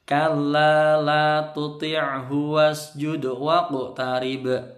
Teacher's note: Waqu ke atas, waqtarib. Nah, tarib kalau yang ba ini qalqalahnya qalqalah kubro, mantulnya besar